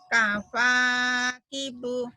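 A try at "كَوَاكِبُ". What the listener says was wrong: Ibu lupa lagi rupanya. Bukan kapa, Bu, bukan. Kawakibu.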